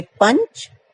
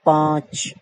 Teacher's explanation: अनुस्वार में हवा नाक से निकलती है और अनुनासिक में हवा नाक और मुंह दोनों से निकलती है।